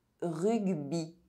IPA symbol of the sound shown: i